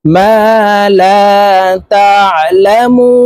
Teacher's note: মু এখানে তিন আলিফ টেনে নুনকে সাকিন করে ফেলবো, কারণ মদের হরফের বামের হরফে ওয়াকফ হইলে মধ্যে আরজি তিন আলিফ টেনিয়া পড়িতে হয়।